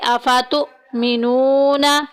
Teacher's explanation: افاتؤ میں دیکھیں حمزہ ساکن آگی جھٹکا دے کے پڑھیں گے